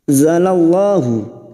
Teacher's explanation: lam jalala yang sebelumnya fathah kita baca tafkim